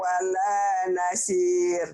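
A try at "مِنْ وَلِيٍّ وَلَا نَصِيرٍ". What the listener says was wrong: Walanya udah bener, di li-nya belum nih Bu ya, dengerin ya nih.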